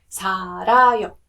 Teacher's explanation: But if you're saying 살아요, it sounds more towards the R sound.